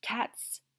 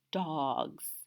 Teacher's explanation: cats has more of a typical S sound, whereas dogs has more of a Z sound